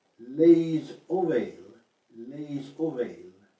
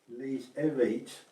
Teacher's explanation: the final S on les is not really pronounced, but if the plural word starts with a vowel, then the S has to be pronounced